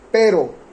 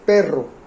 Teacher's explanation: Este par mínimo se mantiene intacto en todo el mundo hispanohablante, pero la diferencia radica en la vibración de la lengua. Pero tiene una vibración simple, transcripción, ahí está.